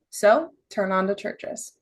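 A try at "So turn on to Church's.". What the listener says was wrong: No, make your point. So turn on to churches. Just by punching it a little bit. Because throwing that last, so turn on to churches. It was nice and it was casual and pretty, but you kind of went down with it.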